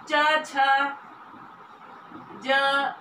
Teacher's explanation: जिसमें वायु स्पर्श करते हुए घर्षण के साथ में मुख विवर से निकलती है उसको हम स्पर्श संघर्षी कहते हैं। जब मुख द्वार को बंद करके इस प्रकार बोलते हैं तो उससे हवा कुछ रगड़ते हुए मुख विवर से निकलती है तो उसको हम स्पर्श संघर्षी कहते हैं, जिसमें च और च छ ज ये व्यंजन आते हैं।